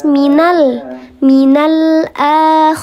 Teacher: Kalau izhar qamari dia lam qamariah namanya izhar qamari ya. Lam bertemu dengan huruf qamariah. Maka dibaca jelas · Lam ta'rif, lamnya dibaca jelas menghadapi huruf hamzah, ditandai dengan ada sukun di atas huruf lam, maka namanya lam qamariyah.